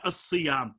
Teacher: صاد اپنے مقارب لام تعریف کا مدغم فی ہے